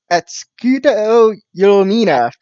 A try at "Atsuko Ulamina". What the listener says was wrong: saying you keep saying Axkudo.